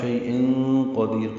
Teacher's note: تنوین کے بعد قاف آنے کی وجہ سے اخفا ہے